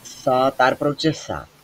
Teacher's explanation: সায়ের মাখরাজ জিহ্বার আগা উপরের দাঁতের আগা।